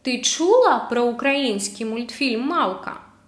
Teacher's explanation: Ти чула про український мультфільм «Мавка»? So this is the question without question word, just with question intonation